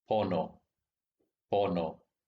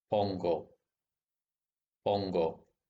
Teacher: the tip of your tongue has to move around in your mouth to say pono, but it just lies around lazily when you say pongo